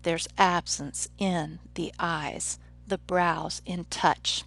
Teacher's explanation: each of those stressed syllables is preceded by usually an unstressed syllable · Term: iambic line